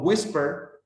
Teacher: Or, for example, in the other case, when the syllable is not stressed, cuando la sílaba no está estresada, por ejemplo, whisper, solamente la primera sílaba está cargada